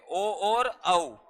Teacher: ओ और औ, और इनका उच्चारण स्थान क्या हो जाएगा? कंठोष्टम।